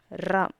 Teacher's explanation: ரா இது இடையின ரகரம். பிறக்கும் இடம் நாக்கால் முன் அன்னத்தை வருட பிறக்கும்.